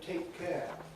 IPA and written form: ˈteɪk ˈkeə (take care)